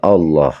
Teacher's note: hukum bacaan lam lafzul jalalah lam tebal